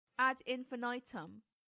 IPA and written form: æd ˌɪnfɪˈnaɪtəm (ad infinitum)